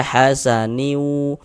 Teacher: Tapi bunyi tanwinnya masuk melebur ke huruf wau sehingga dibaca hasaniu. Kemudian di bagian niunya itu suaranya itu kita tahan, kita panjangkan sepanjang dua harakat karena dia dighunahkan. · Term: idgham ghunah